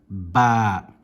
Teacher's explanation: This letter originates from the lips meeting together.